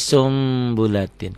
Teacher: Jadi sumbulatin kenapa karena nun mati ketemu ba huruf iqlab ya Bunyi n-nya berubah menjadi m samar sedikit seperti ikhfa Safawi